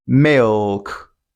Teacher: You can hear the dark L in the word milk. Oh, it's sounding O.